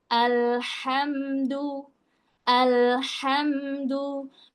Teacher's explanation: huruf lam itu sedikit ngalir suaranya. Huruf mim juga sama. Huruf ha tadi dari tengah tenggorokan pedes.